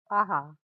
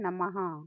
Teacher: अच्या पुढे जे dot किंवा ठिपके लावले आहेत त्याला विसर्ग म्हणतात आणि ह्याचा उच्चार ह असा होतो